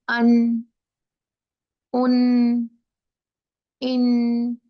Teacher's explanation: पहले पहले आप कहिए अन, उन, इन, वहीं रुक जाए। जुबान कहाँ लगी है आपकी, नून के मखरज पे लगी हुई है, सामने के दांतों के ऊपर